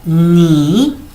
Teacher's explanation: el tono 3 es como una bajada y una subida